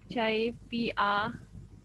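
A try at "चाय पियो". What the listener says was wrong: Ini O ya, bukan A ya.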